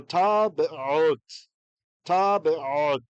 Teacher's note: And the second one will begin a syllable, so bet. So technically the first schwa you're not hearing and the second you are